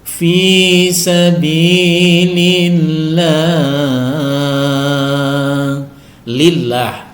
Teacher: lillah kasrh huruf yang berkasrah sebelum lafzul jalalah Allah ini maka lafaz Allah ini wajib dibaca tipis